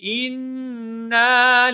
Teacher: حمزہ کو نون مشدد کے ساتھ ملائیں گے، نون مشدد کے اوپر غنہ ہوگا